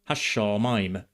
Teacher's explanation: the Biblical word has a doubled consonant after the definite article ha.